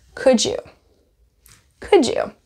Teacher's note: with a D sound D D D D D D and the next word starts with a y sound so it's going to most likely transform and become more of a j sound